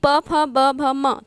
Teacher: प फ ब भ म, तो इसमें ओष्ठ काम करता है